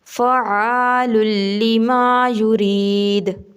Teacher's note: دال کے اوپر قلقلہ ہے تو دال کو ہلکا سا ہلا کے پڑھنا ہے